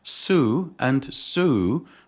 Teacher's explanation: Similarly, sue and sue begin with alveolar consonants because the tongue touches the alveolar ridge